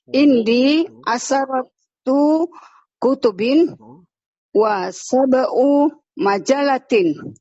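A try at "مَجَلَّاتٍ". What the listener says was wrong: Ingat panjang. Majalatin. Ayo panjang pendeknya Ibu. Nggak boleh salah. Kamu bahasa Arab harus benar panjang pendeknya.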